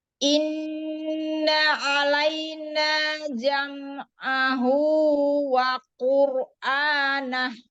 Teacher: Jangan memanjangkan harokat pada huruf hamzah. Ya, kasrah pada hamzah jangan dipanjangkan. Langsung masuk ke nun tasydid.